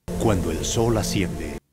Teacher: cuando el sol asciende, Entre cuando y el se formó el diptongo OE. Y la L de sol se ha unido con la A de asciende.